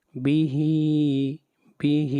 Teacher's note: ہا کو کھینچ کر پڑھیں گے ایک الف کے برابر